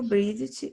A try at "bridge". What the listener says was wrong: Bridge. No, you're saying like Bridget. No, bridge.